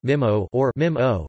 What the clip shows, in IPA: ˈmihmo or ˈmimːo